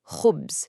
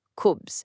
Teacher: The Arabic word for bread is khubz, starting with that really distinctive kha sound. It requires this soft, throat-clearing friction.